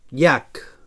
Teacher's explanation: So palatal lateral sonor